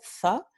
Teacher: En el norte y centro de España, obviamente, tenemos el fonema interdental fricativo sordo